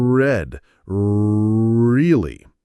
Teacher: The key is that your tip of your tongue does not touch the roof of your mouth. Instead, the body of your tongue bunches up and pulls back, or the tip curls slightly upward and backward, retroflex. Your lips might be slightly rounded.